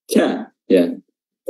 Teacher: makhrajnya adalah pangkal lisan atau Pangkal lidah diangkat dan bertemu dengan langit-langit eh langit-langit keras ya langit-langit keras bagian dalam c dan dia